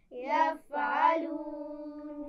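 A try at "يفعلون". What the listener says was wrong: ٹھیک ہے، فا پہ قلقلہ نہیں ہونا چاہیے، یہ ایسا نہ ہو کہ فا پر جزم کی بجائے زبر کا پتہ لگے۔ یفعلون،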